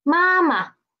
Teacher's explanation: And the second ma is a neutral tone, okay?